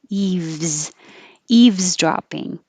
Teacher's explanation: The V takes time, but you do have to do it. Eaves, and go from the V to the Z.